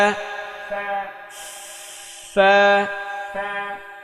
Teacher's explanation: উপরের দুই দাঁতের আগা নিচের ঠোটের পেটে লাগাতে হবে